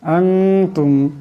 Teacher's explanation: আনতুম, এখানে নুন সাকিন, নুন সাকিনের পর তা আসছে, এই নুন সাকিনকে একালি পরিমাণ একবার গুণনা করে পড়তে হবে